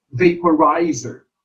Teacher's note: in the word vaporizer, the third syllable is accented or stressed.